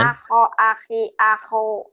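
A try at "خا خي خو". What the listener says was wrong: Khonya kurang ngorok ya. Aho ahi ahu.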